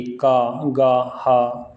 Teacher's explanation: का वर्ग का उच्चारण गले से होता है, इसलिए इसे कंठ ध्वनियाँ कहा जाता है